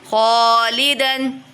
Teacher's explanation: خوا حرف مستعلیہ میں سے تو پر پڑھیں گے، لام کو کھینچیں گے